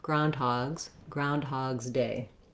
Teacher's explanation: and then when i have a possessive or a plural with after a g sound which is a voice sound then my letter s says the z sound groundhogs groundhog's day i tend to run those together groundhog's day